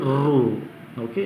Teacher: ನೋಡಿ, ರು ಅನ್ನುವಂಥದ್ದು ಅಷ್ಟೇ ನಾಲಿಗೆಯ ಮೇಲ್ಭಾಗದಲ್ಲಿ ಹುಟ್ಟುತ್ತೆ. ನಾಲಿಗೆ ಬೆಂಡಾದಾಗ ಆ ಕಡೆ ಈ ಕಡೆ ಉಸಿರು ಗಾಳಿ ಹೋಗುತ್ತೆ, ಆಗ ಉಚ್ಚಾರಣೆ ಆಗುವಂಥದ್ದು ರು